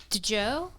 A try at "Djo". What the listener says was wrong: No, it's Joe. It's the D is silent, obviously. Like Django.